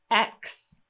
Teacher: X has two consonant Sounds here we have a k and an s